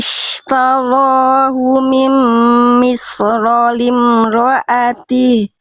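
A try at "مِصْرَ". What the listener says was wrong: Oke, shotnya tebalkan sedikit lagi. Mils. Jadi tadi kedengarannya saya pakai warna merah aja ya biar jadi fokus. Iya, agak kesin. Jadi shot itu kalau dia kurang tebal, nggak ditebalkan, bunyinya sin. Mis. Bedakan antara misro dengan mils. Mils. Misro. Itu impact dari huruf tebal tuh diangkat pangkal lidahnya begini. Lidah dalamnya diangkat begini teman-teman. Kalau tipis baru turun. Kalau sin turun begini lidah dalamnya. Kalau short naik dia.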